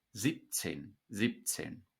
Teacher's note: This B becomes a P, as do all voiced consonants at the end of a syllable in German.